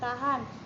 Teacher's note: ciri-ciri mati oral laringal fricative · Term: laringal frikatif